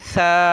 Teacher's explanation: ثا پہ جو ہے زبان تھوڑی سی باہر نکالی جاتی ہے